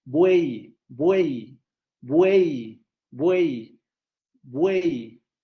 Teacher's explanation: el elemento más fuerte del triptongo es el elemento central